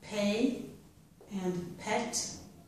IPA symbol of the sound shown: p